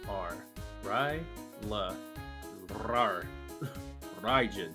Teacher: It's not a trill. It's a flap.